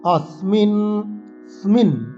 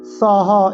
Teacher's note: এইসব শব্দগুলোতে আমরা স দাঁতে লাগিয়ে সকে উচ্চারণ করব